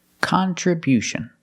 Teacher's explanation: Stress the first and third syllable.